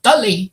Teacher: the emphasis will be on the first syllable